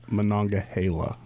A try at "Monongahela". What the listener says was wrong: No, not Gila. Monongahela.